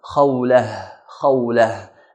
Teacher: when we're stopping at the word Khawla, we should stop with the ha sound, H sound